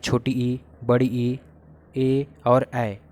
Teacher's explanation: जीभ के अगले हिस्से से बोले जाने वाले स्वर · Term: अग्रस्वर